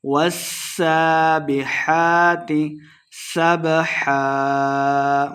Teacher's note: والسابحات سبحا، والسابحات سین مشدد ہے، واؤ کو سین کے سامنے لا کے پڑھیں گے، سین پہ سیٹی کی آواز آئے گی